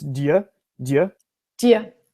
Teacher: instead of do, we just drop the O and merge it with the Y. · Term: reduction